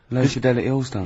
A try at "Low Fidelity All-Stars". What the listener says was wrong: Yeah, Low Fidelity, because you went Low Fidelity All-Stars. No, it's just you didn't open your mouth wide enough.